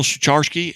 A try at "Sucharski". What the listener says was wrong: So it's over the years, but the C's actually silent, but no worries.